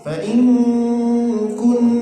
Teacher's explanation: nun mati berjumpa dengan kaf. Nah, ikhfa disembunyikan ke huruf kaf.